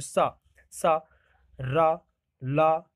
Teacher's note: सा तो दांत भी बोल रहा, मसूड़ा भी लग रहा है इसमें, मसूड़े का भी प्रयोग हो रहा है दंत मूल से, सा रा ला, तो इनमें ये इसको बोलते हैं वत्स्र बोलते हैं, क्या बोलते हैं?